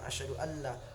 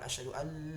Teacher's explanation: Jadi nun itu tidak boleh dibunyikan karena udah dimasukkan huruf la. Langsung aja ke tasdid la, dianggap enggak ada aja nun tuh. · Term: bila gunnah